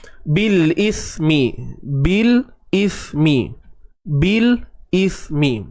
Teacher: Huruf sa baris bawah si, hujung lidah tak payah keluar, duduk dalam.